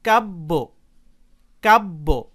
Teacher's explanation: ভালোভাবে খেয়াল করে দেখুন, এখানে শব্দের শেষে ব্যঞ্জনবর্ণের সাথে অর্থাৎ বয়ের সাথে জ ফলা যুক্ত হয়েছে। এখানে ব আছে একবার, সাথে জ ফলা যুক্ত হয়েছে, আর উচ্চারণের সময় ব দুইবার উচ্চারিত হয়েছে, অর্থাৎ জ ফলাযুক্ত ব্যঞ্জনবর্ণের উচ্চারণ দ্বিত্ব হয়েছে, মানে ডাবল হয়েছে।